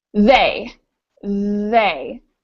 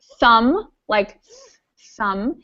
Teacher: they you use your vocal cords and thumb is a much quieter sound because we're not using our vocal cords